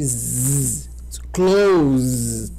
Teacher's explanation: Tu botar os dedos na garganta, tu vai ver que vibra muito. Então, ele é voiced, é sonoro.